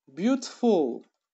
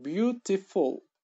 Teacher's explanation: Birinchi urg'u birinchi bo'g'inga tushyapti.